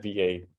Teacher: the H is silent, so HVAD just becomes something like a flat VA